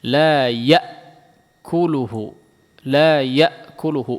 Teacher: Coba perhatikan di sini hamzah semua ya, tidak ada ain.